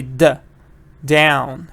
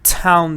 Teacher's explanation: when you say down you feel that vibration in your throat but town there is no vibration in town